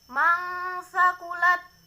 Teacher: ada nun mati bertemu dengan huruf ta itu bacaan Ikhfa cara membacanya samar-samar